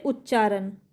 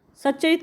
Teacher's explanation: तो यह च बच जाता है कैसे उच्चारण से उच्चारण कैसे आधा त आपका आधा च में बदल गया